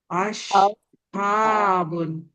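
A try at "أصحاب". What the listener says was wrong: Nah, itu masih pakai tengah lidah itu. Ya. Coba pakai ujung lidah. Iya, ujung lidah. Sot, dia pakai ujung lidah. Coba sambil dirasa-rasa lidahnya. lidah ini.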